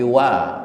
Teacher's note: waw dipatah dibaca wa, bukan wo, tetapi wa